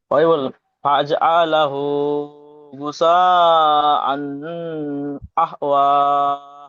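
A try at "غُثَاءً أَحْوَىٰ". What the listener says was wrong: গুসা আন বলে গুন্না করছেন, হামজার উপরে দুজাবার, দুজাবারটি তানবিন, তানবিনের পরে হরফে হালকির 6টি অক্ষরের মধ্যে হামজা এসেছে, তাই তানবিনের আওয়াজ। হ্যাঁ, ইজাহার মানে বিনা গন্না।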